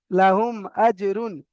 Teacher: মিম সাকিনের পরে মিম আর বা ছাড়া অন্য অক্ষর হামজা এসেছে, অন্য অক্ষর অর্থাৎ হামজা এসেছে, তাই মিমকে বিনা গুণা জাহির করে পড়তে হবে। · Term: ইজহারে সাফাবি